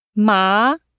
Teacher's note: This is a rising tone, from medium pitched to high. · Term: second tone